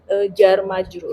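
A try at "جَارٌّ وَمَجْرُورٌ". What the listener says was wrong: Nah, gitu jar majrur. Ja-nya panjang ya, jar gitu. Jangan dibiasakan pendek. Jar. Jarun wa majrurun. Jar gitu ya.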